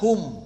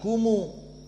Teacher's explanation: Makna silah adalah didomahkan, bukan disukunkan. Tidak kum, tetapi kumu. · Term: silatul mim al-jama'